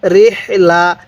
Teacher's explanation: হাটা উচ্চারণের সময় মুখ দিয়ে বাতাস বের করব